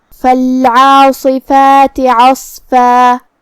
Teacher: پھر حرف الصاد ہے، صاد حروف التفخیم میں سے ہے تو ہم حرف الصاد کو بھاری آواز میں اور منہ پھلا کے ادا کریں گے. کلمت عصفہ میں بھی حرف الصاد کا دھیان رہے جو کہ یہاں فا پہ تنوین زبر ہے.